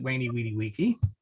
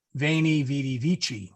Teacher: The hard C, classical Latin always had the hard C. Ecclesiastical Latin, we soft that up.